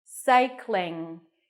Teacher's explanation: together Cy cling like the word cling to cling on something the end has an NG cycling so you don't have to pop the g at the end it's just in in cycling cycling the next is surfing I · The end has an NG, cycling. So you don't have to pop the G at the end. It's just ing.